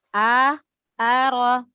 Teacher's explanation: ro-nya dibaca tebal karena ro berharokat fathah. A-nya dibuka mulut.